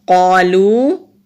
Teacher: قوف حروف مستعلیہ بھی ہے، موٹا بھی کریں گے، اور الف سے پہلے زبر ہے، ایک الف کے برابر لمبا کریں گے۔ قالو، اور یہاں ایک چھوٹی سی مد نظر آ رہی ہے، اس کو لہر والی مد بھی کہتے ہیں اور چھوٹی مد بھی کہتے ہیں۔